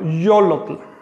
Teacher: Si digo yolotl, yo le estoy añadiendo una O y estoy pronunciando de una manera cerrada. No estoy diciendo iolotl, sino yolotl. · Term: sonido consonante